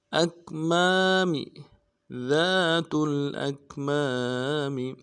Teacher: میم کے بعد الف مدہ ایک الف دال میں کھینچیں گے اور میم کو نون سے ادا کریں گے.